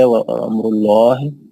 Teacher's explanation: لفظ جلالہ لام موٹا کر کے پڑھیں گے